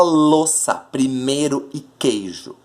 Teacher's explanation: esse U, esse I, eles são tão fracos que eles não são pronunciados na sílaba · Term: semivogal